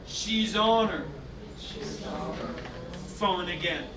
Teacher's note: S turns into a Z, jumps onto the O, H disappears.